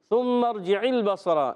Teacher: اور تینوں پر زبر زبر زبر آیا تو کسی کو بھی کھینچنا نہیں، مگر صاد اور را کو ہم موٹا پڑھیں گے · ثم ارجع البصر، جیم کے نیچے زیر، عین کے نیچے زیر، حرکات کو بغیر کھینچے بغیر جھٹکا دی معروف ادا کریں گے۔ عین ادا ہوتا ہے حلق کے درمیان والے حصے سے، یاد رکھنا ہے عین کو لام سے ملانا ہے، مگر لام کو ہلانا نہیں۔